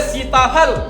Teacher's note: सीता तो कहाँ जा रहा है, दांतों के ऊपर की जड़ पे जा रहा है ना। सीताफल, सीता, है ना।